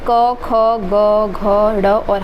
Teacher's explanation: कंठ व्यंजन से क, ख, ग, घ, ड़ और ह आते हैं